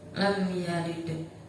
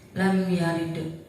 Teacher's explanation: Di situ ada mim mati bertemu dengan huruf selain mim dan ba, yaitu ya, maka cara bacanya jelas.